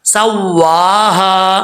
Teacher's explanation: یہاں پہ جو ہا ہے یہ بھی بھاری ساؤنڈ کے ساتھ پڑھا جائے گا، اس کو بریک نہیں پڑھنا، الف پڑھا جائے گا. آگے واو کو پڑھتے وقت ہونٹ گول کریں گے. فسوا، سوا نہیں پڑھنا، سواہا.